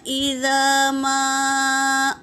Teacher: الذین میں یا ساکن سے پہلے زیر یا مدہ، ایک الف کے مقدار کھینچیں گے۔ اذا میں الف مدہ ہے اور ما میں بھی مد ہے، الف مدہ بھی ہے اور مد ہے، مد منفصل، تو اسے 3 سے 4 الف کے مقدار کھینچیں گے، اور حمزہ پر حرکت ہے تو جلدی پڑھیں گے۔